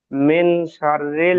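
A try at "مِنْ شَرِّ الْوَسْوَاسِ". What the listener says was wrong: মিন, মিন মিন গুন্না করতে হবে।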